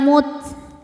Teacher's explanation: Huruf ta ini dalam keadaan sukun anginnya keluar terakhir ya. Jadi setelah suara kuatnya, suara syiddahnya baru keluar angin.